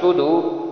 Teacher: سواد جب نکالیں گے صدور تو زبان کی نوک جو ہے اوپر والے دانتوں کی جڑوں سے لگائیں گے